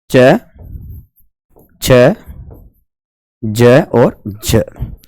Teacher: वे व्यंजन जो स्पर्श व संघर्षी दोनों होते हैं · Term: स्पर्श संघर्षी व्यंजन